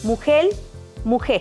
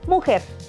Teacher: Se pierde la R o se cambia por L. Países: Cuba o zonas costeras.